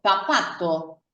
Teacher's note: vamos a pronunciar la palabra zapato como si fuera una fricativa dental sorda, que es lo mismo que decir que tenemos que poner la punta de la lengua entre los dientes de arriba.